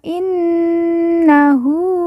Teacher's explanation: Nun yang bertasdid kita baca ditekan ditahan dua harakat dan didengungkan